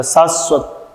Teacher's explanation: तो तालु से जाकर हमारी जीवा स्पर्श करती है, अतः यह तालव्य वर्ण के अंतर्गत आएगा